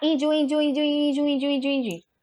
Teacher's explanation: se você separar índios em duas sílabas, índios, o in continua sendo a sílaba tônica, tá? Não muda.